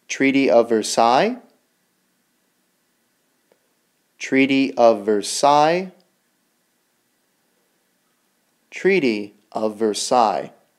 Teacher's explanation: Versailles is a French word. So it sounds you don't hear the L sound